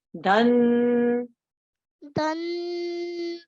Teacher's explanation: Noon mushaddad, so we make that nasal sound